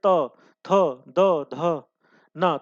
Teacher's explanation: त थ द ध न तो वहां पर क्या होता है जीभ जो है दांत के बीच में से गुजरती है